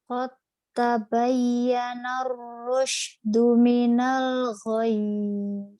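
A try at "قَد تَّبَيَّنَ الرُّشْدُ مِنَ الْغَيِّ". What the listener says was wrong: Qad, qadnya hilang ya, masuk ke ta, diidghamkan.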